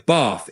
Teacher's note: In American English, that same A in bath tends to sound more like the A in cat. So you'd hear bath instead of bath.